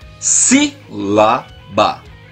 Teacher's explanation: A sílaba tônica é a antepenúltima sílaba da palavra. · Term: proparoxítona